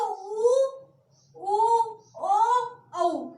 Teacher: इन स्वरों का उच्चारण करने से हमारे होठों की आकृति कैसी हो जाती है? गोल हो जाती है। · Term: वृत्तामुखी